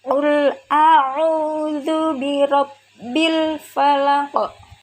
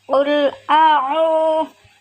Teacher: Qul a'udzu adalah mad tabi'i karena ada wawu sukun sebelumnya harokat dhammah. Panjang bacanya 2 harokat. Qul a'udzu birabb, ada ra fathah maka dibaca tafkhim atau tebal.